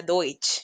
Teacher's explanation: esa combinación de E y U suena como OI